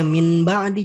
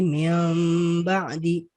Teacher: Kondisinya adalah ketika nun mati atau tanwin bertemu dengan huruf ba, maka apa? Maka nun mati atau tanwinnya berubah menjadi mim. Contohnya min ba'di jadi mim ba'di. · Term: iqlab